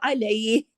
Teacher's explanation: हा पे अगर रुकते हैं ना तो हा की आवाज गले में जरूर आनी चाहिए, हरकत को रोकते हैं, हा को नहीं गायब कर देते, ठीक है।